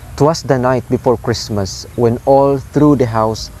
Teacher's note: "'Twas the night," low, low, high, then 2 unstressed followed by 1 stressed syllable